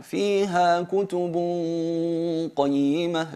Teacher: Hacemos la disimulación del tanwin con el qaf, lo único que tiene que ser enfatizada la gunna porque el qaf es enfatizada.